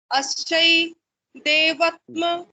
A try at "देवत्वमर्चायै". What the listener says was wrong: देवत्व, देवत्व। नहीं माँ मत बोलिए, माँ मत बोलिए, बोलिए देवत्व।